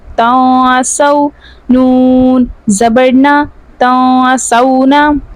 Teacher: نون ساکن کے بعد حروف اخفا میں سے سین آ رہا ہے، یہاں پر اخفا کا قاعدہ ہوگا اور غنہ کر کے پڑھیں گے۔